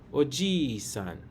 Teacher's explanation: The vowel I is repeated. Stretch the I with one full beat and say oji-san. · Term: long vowel